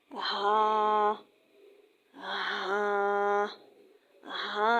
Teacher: ہا ادا کرتے وقت بھاری آواز نکالنی چاہیے اور ہا کی آواز بھی گلے سے نکلے گی، یعنی گلے کا وہ حصہ جو سینے کی طرف سے ہے وہیں سے ہا کی آواز بھاری نکلے گی، ہا۔